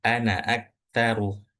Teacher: Jadi alif yang ada setelah huruf nun ini nggak perlu dibaca.